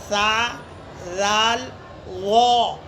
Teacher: زبان کی نوک ثنایا علیاء کے کنارے کو زبان لگانا ہے اور زیادہ زبان باہر بھی نہیں آنا ہے